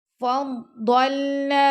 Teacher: تل کر رسول فضلنا، ضاد کو ہم نے موٹا پڑھنا ہے اور لام کو ہم نے نرمی سے پڑھنا ہے۔ فضلنا، نون کو ہم نے 2 سیکنڈ تک لمبا کرنا ہے